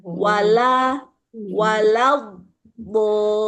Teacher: Jadi la-nya ini tipis, wa-nya tipis. Baru masuk mencekukan tengah lidah pada kata bo.